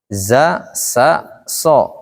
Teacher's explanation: Sofir. Huruf ujung lidah bertemu dengan gigi bawah.